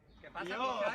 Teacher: Además de este, sobresalen otros rasgos del andaluz, como por ejemplo la relajación del sonido che, tan reconocible en la zona de Cádiz